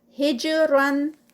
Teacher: جیم light اور ساتھ میں جیم کا قلقلہ